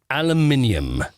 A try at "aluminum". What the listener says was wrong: All right, now you're adding about 6 syllables there that you don't need.